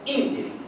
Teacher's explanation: A sílaba tônica é a antepenúltima. Então é uma palavra proparoxítona.